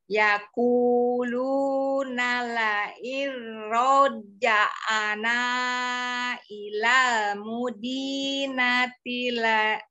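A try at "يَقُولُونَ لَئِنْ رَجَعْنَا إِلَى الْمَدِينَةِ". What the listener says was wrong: Ya, ro-nya tidak panjang ya. La iro.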